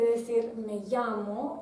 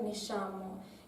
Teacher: eso es el fricativo palatal sorda, el sonido sh. En vez de decir me llamo, en Chile se diría me llamo.